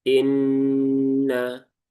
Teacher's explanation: Kemudian inna di sini ada nun yang bertasydid ee gunah musyaddadah. Maka pastikan ghunahnya tertunaikan dengan sempurna. Tahan dulu tiga harakat. Tunaikan taranumnya. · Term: gunnah musyaddadah